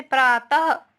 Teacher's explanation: इसका उच्चारण व्यंजन के बाद हा के उच्चारण में किया जाता है ना। अहा का, उसमें हम हा का उच्चारण निकलता है मुंह से। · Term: विसर्ग